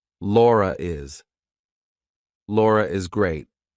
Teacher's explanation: In a lot of UK dialects, if you have a word that could end in an R, it sounds the same as a word that ends in an R followed by a vowel. We're probably going to put an intrusive R in there. · So if I have to link my name to something else that's a vowel, I have to put an R in there. So I say, Laura is.